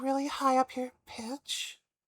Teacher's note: going just absolutely as high as possible and talking in a really breathy, soft um really high up here pitch